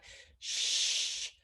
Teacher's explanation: My lips are rounded and my tongue is pulled back. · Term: sh sound